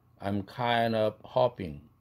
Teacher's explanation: 모음 ND 모음이니까 드가 날아가고 N 사운드가 링킹 돼서 kind가 되죠. kind.